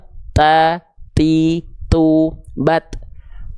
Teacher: ujung lidah kita disentuhkan ke pangkal gigi seri atas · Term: huruf ta